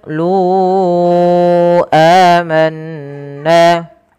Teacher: Kemudian lu amanna pada lafal qolu lunya kita panjangkan empat harakat teman-teman karena di sini ada bacaan mad jaiz munfasil yang di mana adanya mad thabi'i bertemu dengan hamzah setelahnya. Pada dasarnya lu panjangnya dua harakat karena ketemu hamzah dan hamzah tersebut terpisah maka dia dipanjangkan empat harakat. Dan inilah yang dinamakan dengan mad jaiz munfasil.